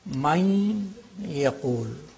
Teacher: With the nasal quality of the noon is retained, and there is idgham. Idgham, which is naqis, which is incomplete.